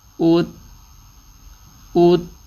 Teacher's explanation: او پہ گول اور تا پہ بیک واپس چلے گئے